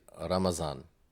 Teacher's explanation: in Urdu, for example, they would say, instead of Ramadan, they would say Ramazan. So the da becomes the za.